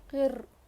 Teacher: رو کو موٹا نہیں پڑھیں گے کیونکہ روئے ساکنہ سے پہلے زیر ہے